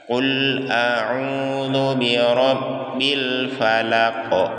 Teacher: Huruf qaf itu termasuk dari 5 huruf qalqalah. Ya, jadi di akhir ayatnya kita pantulkan suara kita.